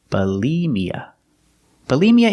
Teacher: second syllable use a long e like green beans B Bia put the stress on the second syllable